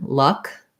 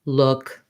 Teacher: So you can see for luck, I'm more central. Look is a little higher and my lips are slightly rounded.